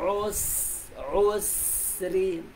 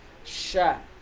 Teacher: Matulin yung boses ng safir. Hindi siya makapal na lumalaganap.